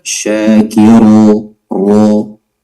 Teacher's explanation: waqaf saja dan ra-nya tebalkan